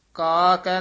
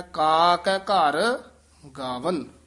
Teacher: ਇਥੇ ਵਿਸਰਾਮ ਹੈ ਕਾਕੈ ਨਹੀਂ ਕਹਿ ਦੇਣਾ ਕਕੱਠਈ ਨਾ ਵੱਖਰਾ ਕਹਿਣਾ ਕਾ ਕੈ ਸਨਬੰਧਕ ਲਮਕਾ ਕੇ ਉਚਾਰਨ ਕਰਨਾ